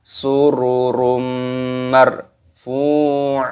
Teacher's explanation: Jadi dimasukkan dan disertai berdengung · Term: Idgham Bighunnah